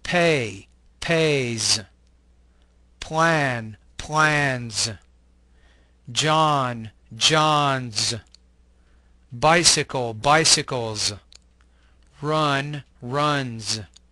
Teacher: The S ending in this group sounds like a Z, the Z sound.